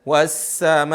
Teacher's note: Enggak usah ragu-ragu untuk memanjangkan, berharokat 5 sampai 6. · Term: mad wajib